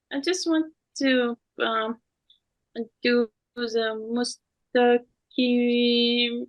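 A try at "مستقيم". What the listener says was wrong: Good, but you narrow your lips. Is it right? You're narrowing your lips in qaf. You're still narrowing. The narrowing the lips affected the sound. When you practice your ear, you know that they change the sound completely.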